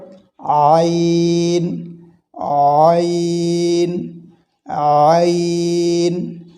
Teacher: এটি গলার মধ্যখান থেকে উচ্চারণ হয়